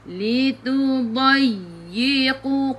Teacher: Dai ya ada sabdu nabr. Kena tekan lebih sedikit.